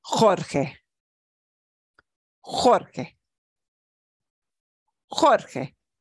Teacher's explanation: a soft sound that means it gets that throaty H sound